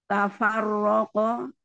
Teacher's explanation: Wa ma manya matobi'i alif sebelumnya fathah. Tafarroko, ronya tebal karena berharokat fathah